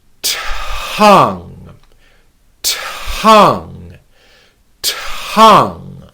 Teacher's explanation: hand on our throat to make sure there are no vibrations we whisper the T sound and we add the t- sound into the word without adding an extra syllable